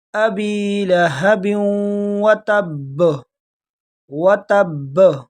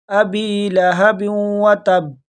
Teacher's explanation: یہ با جو آخر میں ہے اس پر تشدید ہے، اس کو تھوڑے جھٹکے کے ساتھ پڑھیں گے۔ اکثر لوگ مسٹیک اس میں یہ کرتے ہیں کہ با کو ساکن پڑھ لیتے ہیں، ابی لہب وتب، با پہ بالکل رک جاتے ہیں، یہ بڑی مسٹیک ہے۔